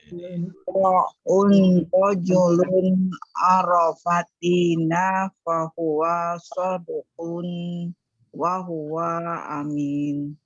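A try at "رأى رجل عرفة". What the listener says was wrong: Masya Allah, barakallahu fiik.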